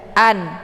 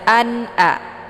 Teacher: nun sukun jumpa hamzah adalah bacaan idhar, jelas tidak boleh dibaca dengung. An, jelas bunyi n.